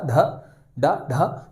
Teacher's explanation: आप बोलकर देख सकते हैं ड ढ ड ढ, जीभ रोल लेकर ऊपर की ओर जाएगी और छत में पीछे की ओर, ठीक है। हमारे जो मुंह की छत है दोस्तों ऊपर का भाग उसके पीछे की ओर, तो ड ढ मूर्धा।